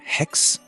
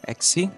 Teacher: Here, one of the main changes is that aspirations in hex, exi, this aspiration disappeared into modern Greek